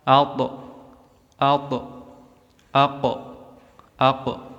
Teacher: suara pantulan pada qalqalahnya tebal atau besar sehingga mendekat ke vokal o.